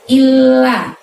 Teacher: Ada tasydid di lamnya ya, bukan ilah tapi l-nya double. Lalu lalnya itu pendek, nggak boleh dibaca illal tapi illal, temponya cepat.